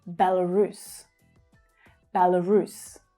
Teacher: So the main stress is on the final syllable.